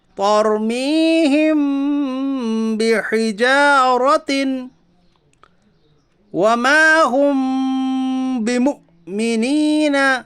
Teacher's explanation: میم ساکن کی آواز کو ناک میں چھپا کر غنہ کے ساتھ پڑھیے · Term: اخفاء شفوی